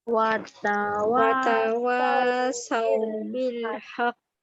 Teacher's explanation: ada bunyi senyap sekejap baru bunyi ke. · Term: qalqalah akbar